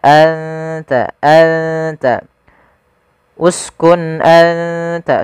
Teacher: suara nunnya disamarkan ke huruf ta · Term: ikhfa